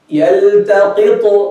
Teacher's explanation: qalqala, to bounce in the exact place of the letter. You don't open the mouth with it. You don't make any part of the haraka, fatha or kasra or whatever, as some students and imams or sheikhs do.